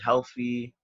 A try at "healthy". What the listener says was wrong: It sounded like you said healthy, like with an F.